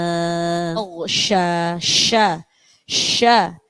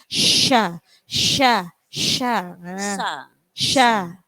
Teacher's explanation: Jadi sya itu hembusan nafasnya banyak.